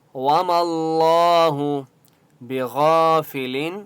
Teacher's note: لفظ اللہ سے پہلے میم کے اوپر زبر ہے اس لیے اللہ کا نام موٹا ہوگا